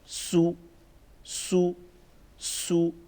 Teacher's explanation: سین پیش سو سو سو، سختی کے ساتھ پڑھیں گے اور سیٹی کی آواز بھی تھوڑی سی اس میں ایڈ کریں گے